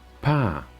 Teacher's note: we have a falling tone par indicated with my toe